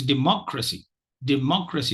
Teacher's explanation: Okay, so once the 2nd syllable contains the stress, automatically you won't have 2 stressed syllables. There's only one stressed syllable in democracy, and that is the second syllable.